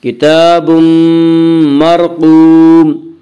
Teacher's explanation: اس کا قاعدہ ہے کہ را ساکن سے پہلے زبر اور پیش آئے تو را کو پر پڑھیں گے، یا را ساکن سے پہلے زیر آئے تو را ساکن کو باریک پڑھیں گے۔ یہاں را ساکن سے پہلے زبر ہے، اس سے را کو پر پڑھیں گے۔